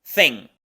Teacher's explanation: otro sonido interdental con una I corta y otra vez la n velar